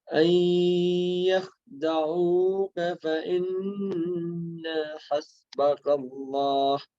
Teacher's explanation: So you can pull the noon as much as you want. Yeah. But the na you cannot pull.